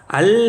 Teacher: 알 해보면, 여러분 따라해보세요. 알 해보면 혀끝이 잇몸에 댄 채로 공기가 혀 양옆으로 나온다.